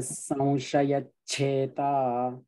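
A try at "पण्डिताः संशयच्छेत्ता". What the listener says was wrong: Cheta no. Cheta double ta. So chet and then ta. Cheta.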